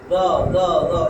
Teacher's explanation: এই জিহ্বার আগা উপরের যে দাঁত, সামনে দুইটা দাঁত, এই দাঁতের আগে লাগিয়া উচ্চারণ হবে